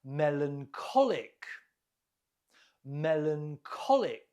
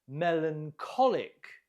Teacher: Note the stress on the co.